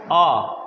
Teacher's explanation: चलिए अर्ध विवृत आपको पता है, ना तो अग्र होता है ना पश्च होता है, अर्ध विवृत मध्य भाग से बोला जाता है, इसलिए क्या है? अब विवृत, विवृत में आपको पता है आ, यानी कि मुख पूरा खुला हुआ